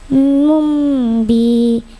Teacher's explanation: Mumbi iklab. Domatain bertemu ba. Dengung bacanya.